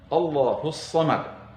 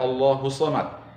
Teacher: Jadi huruf sadnya betul-betul bertasydid. Ada yang membaca Allahus Samad, maka tentu bacaan itu keliru, meskipun tidak membatalkan solatnya.